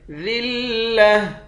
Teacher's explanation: ترہقوہم را اور قاف دونوں کو موٹا پڑھیں گے، ذلہ آخر میں گولتا ہے، گولتا پر جب وقف کرتے ہیں گولتا ہاں بن جاتی ہے